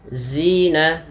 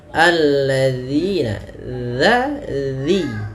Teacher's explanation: Dzal ini harus kita perhatikan karena sering terjadi kesalahan adalah dengan mengganti huruf dzalnya dengan huruf zai